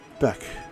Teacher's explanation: with a soft ch sound in the back of your mouth